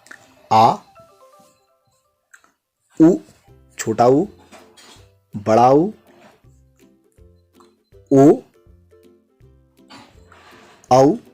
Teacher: जिन स्वरों के उच्चारण में जीभ का पश्च भाग काम करता है, यानी कि पीछे वाला हिस्सा काम करता है, तो उसे पश्च स्वर कहते हैं।